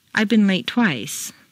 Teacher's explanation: So you say it almost as if it were a single word.